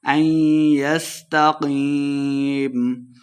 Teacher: ان یستقیم، قاف کو موٹا پڑھیں گے، یا مدہ ہے، دو حرکات اس کو لمبا کر کے پڑھنا ہے اور آخر پہ ہم نے وقف کا دینا ہے.